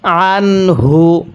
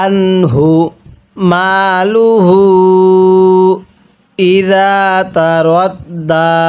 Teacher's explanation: নুন সাকিনের পরে হাটি হলো ইজহারের হরফ, তাহলে স্পষ্ট করে পড়ব।